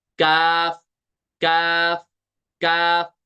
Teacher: इसको हम मोटा नहीं पढ़ेंगे, इसको हम पुर नहीं पढ़ेंगे · जुबान की जड़ लगी तालु के सख्त हिस्से के साथ, यहाँ से अदा हो गया काफ, काफ, काफ। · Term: सिंपल काफ